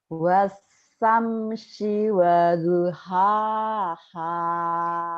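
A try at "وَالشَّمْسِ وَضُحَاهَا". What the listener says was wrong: Iya sama shinnya tuh. Coba Bu shin. Wash, ayo Bu.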